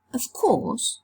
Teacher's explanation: The voiced fricative v has changed into the voiceless fricative f.